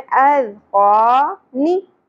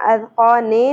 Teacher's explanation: अज़क़ानी, ज़ेर है, ने नहीं पढ़ना, अज़क़ाने नहीं पढ़ना, कैसे पढ़ेंगे, नी शॉर्ट रखते हुए, ज़्यादा नहीं खींचना।